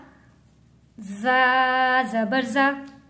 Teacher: ज़ा दोनों दांतों को जोड़कर सख्ती के साथ अदा होगा।